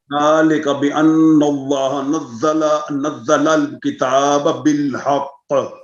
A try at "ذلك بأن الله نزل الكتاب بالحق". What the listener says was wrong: پھر ڈبلنگ ہو گئی ہے. پڑھیے پھر. ذلك بأن الله نزل الكتاب بالحق.